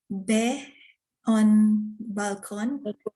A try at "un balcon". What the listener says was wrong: Oui, un balcon. Très bien.